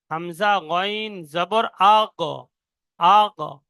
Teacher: পুরো একদম দেখবেন পুরো জিভের শেষ হালকের শুরু থেকে আওয়াজটা বার হবে।